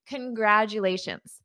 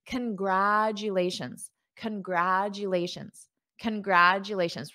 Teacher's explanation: notice this first sound is an unstressed con